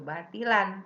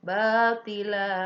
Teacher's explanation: ada mad iwad, tanwin patah di akhir kalimat ya. Bacanya panjang, tidak boleh batilan tapi batila.